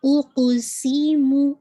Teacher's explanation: سی کی آپ کی وسلنگ ساؤنڈ واضح ہونی چاہیے